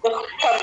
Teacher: దు పక్కన half letter హ క్లియర్ గా వినిపించాలండి